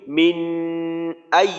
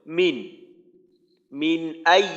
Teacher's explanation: এইভাবে পড়ি মিন আই তাহলে আমার ভুল হবে কারণ কারণ এইখানে নুন সাকিনের পরে হামজা এটা ইজহারের হরফ সুতরাং এইখানে গুন্না করার কোন সুযোগ নেই স্পষ্ট করে পড়তে হবে